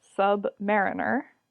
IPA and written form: ˌsʌbˈmæ.ɹɪn.ɚ (submariner)